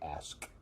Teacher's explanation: when I say ask, I don't usually pronounce the K at all